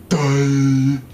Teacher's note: Ending with a diphthong, ending with a high-front vowel.